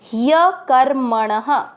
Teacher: फिर क, म के ऊपर आधा रह कर, क के साथ कर और म और ण दोनों में अमिक्स करेंगे मण। ण में अ की मात्रा तो विसर्ग को पढ़ेंगे ह।